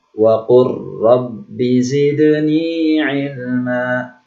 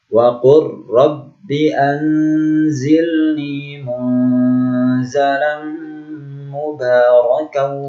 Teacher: Ya, di sini lam sukun bertemu ro. Seolah lam tidak dibaca, langsung sambil huruf ro-nya.